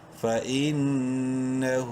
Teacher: نون زبر نہ ہا الٹا پیش ہو. ہا کو الٹا پیش کی وجہ سے ایک الف کے برابر لمبا کریں گے